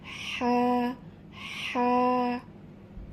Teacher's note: এবার আসি এর মাখরাজ অর্থাৎ উচ্চারণের স্থান। এটি হচ্ছে কণ্ঠনালীর মধ্যখান হইতে উচ্চারিত হবে।